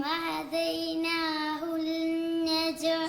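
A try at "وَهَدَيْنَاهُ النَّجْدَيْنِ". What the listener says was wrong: ഹുൽ എന്ന് പറയാൻ പാടില്ല അവിടെ. ഹുന്ന ഹുന്നജ്ദൈൻ. ഇവിടെ നൂനിന് ഷദ്ദുണ്ട്. അപ്പോൾ വഹദൈനാഹുൻ നജ്ദൈൻ.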